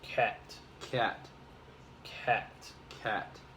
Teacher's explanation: it's shorter because it's closed off by a consonant of the T